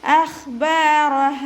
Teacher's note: റ ഫതഹ ആയതുകൊണ്ട് നമ്മൾ ഉയർത്തിയിട്ടാണ് കേട്ടോ ഉച്ചരിക്കുക. ഹ അലിഫ് മദ് വന്നു, അപ്പോൾ നമ്മളവിടെ 2 കൗണ്ട് നീട്ടി കൊടുത്തിട്ട് നിർത്തുക.